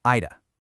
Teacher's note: Listen for that weak uh sound on the end.